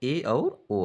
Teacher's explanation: अर्ध समृत स्वर कहते हैं इसके अंतर्गत ए और ओ आता ए और ओ का उच्चारण करेंगे तो मुख जो है आधे से थोड़ा कम खुलेगा